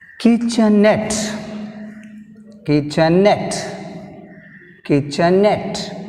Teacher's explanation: Kitchenette last syllable is net, we have stress mark on net. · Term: stress on net